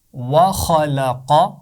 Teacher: یہ بات یاد رہے کہ واو اور لام کی آواز کو موٹا نہیں پڑھنا. خا اور قاف کی آواز کو موٹا پڑھنا ہے